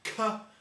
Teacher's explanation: the word hooker so if when you make the C Sound your tongue goes up against the roof of your mouth in the middle of your mouth